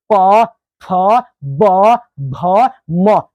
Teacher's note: प फ ब और भ आप बिना ओठ सटाए इसको नहीं बोल सकते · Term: प वर्ग